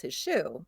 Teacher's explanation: you never hear the Z in his shoe when somebody is speaking naturally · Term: assimilation